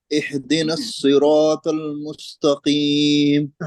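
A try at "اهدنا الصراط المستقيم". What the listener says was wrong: हाँ, इसमें एक तो हा पर कलकला हो रहा है, और दूसरे एक जो गलती हो रही वो हा निकल रहा है, हा नहीं है। हा और हा में हमको फर्क रखना है। इहदिनस नहीं, बल्कि इहदिनस, छोटी हा, जिसको हम उर्दू में छोटी हा कहते हैं।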